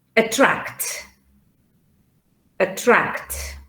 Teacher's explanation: it could be that the stress is in the middle not at the beginning